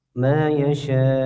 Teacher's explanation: Kemudian yasha, shinnya dipanjangkan 4 sampai 5 harokat. Hukumnya mad wajib muttasil.